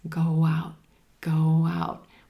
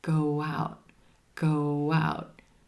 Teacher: We have that O as in roseboat at the end of go, and then the ow as in brown cow at the beginning of the word out, 2 vowels, and the voice flows and connects. Go out, go out, with a very gentle W sound.